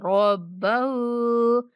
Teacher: रब्ब रा को पुर करके पढ़ेंगे और हा को भी 1 अलिफ तक खींचेंगे।